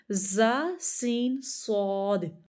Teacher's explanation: ये तीनों हरूफ ऐसे हैं जिन पे सीटी की आवाज आती है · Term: हरूफ सफीरिया